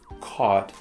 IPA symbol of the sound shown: kɔt